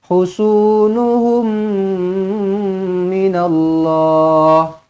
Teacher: Mim kosong bertemu mim sabdu, idgham mislain saghir sekali lagi, dengungkan dua harakat, rapatkan bibir sekali lagi.